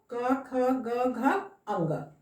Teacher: कंठ से हम लोग इसका उच्चारण करते हैं। कंठ जो है ऊपर उठकर स्पर्श करता है फिर छोड़ देता है।